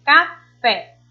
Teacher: O fé, a gente pronuncia com mais intensidade, mais força. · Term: oxítonas